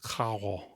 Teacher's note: More like a French R rather than a traditional Spanish trilled R. · in some Caribbean varieties of Spanish, it might sound more aspirated